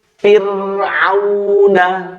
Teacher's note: Fa berharokat kasroh bertemu ro sukun. Maka ro sukun ini dibaca tipis.